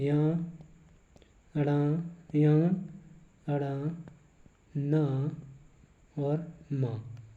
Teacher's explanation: वर्णमाला के प्रत्येक वर्ग के 5वें अक्षर जो आपके आते हैं या, अड़ा, या, अड़ा, ना और मा, ये आपके नासिक्य व्यंजन कहलाते हैं और इन्हीं को नासिक्य वर्ण कहा जाता है। इन वर्णों को बोलते समय नाक और मुख दोनों का प्रयोग किया जाता है।